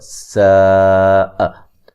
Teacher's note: सीन को बारीक सीटी से अदा करेंगे